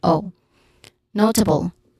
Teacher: So pronunciation wise, one has a short ah sound. Notable, no is the stressed syllable, which has a diphthong sound.